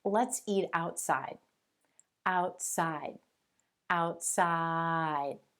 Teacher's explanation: do you hear how my voice falls on that final sound in the word outside · Your voice is only going to fall on the final sound in the final word within the sentence.